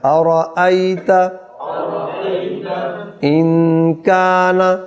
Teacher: نون ساکن کے بعد حرف اخفاء کاف آ گیا تو غنہ ہوگا